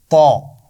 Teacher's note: नोक और ऊपर वाले दांतों के पीछे लगाकर मोटी आवाज के साथ इसको अदा करते हैं